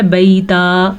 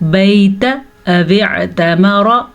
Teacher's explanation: حج البیت او اعتمر، را کو تا کو لمبا نہیں کرنا، تا پہ زبر ہے